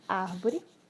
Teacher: a sílaba ar de árvore é a sílaba com mais tonicidade. Então, ela é uma proparoxítona, tá?